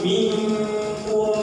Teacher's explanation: berikutnya nah kemudian contoh berikutnya nun mati jumpa dengan Kaf ya Nun mati jumpa dengan Kaf maka dia langsung menjadi kalau bahasa kita Eng ya Kenapa karena dia ikhfa ya yang jauh dari ujung Nun